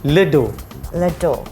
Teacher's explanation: Kita tidak bunyikan huruf S. Kita tidak bunyikan konsonan di akhirnya.